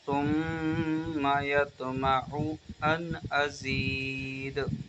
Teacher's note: میم مشدد کا گنہ لگے گا، ناک میں آواز لے جا کے پڑھیں گے